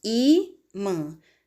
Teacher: Sílaba mais forte é o I. Paroxítona terminada em an.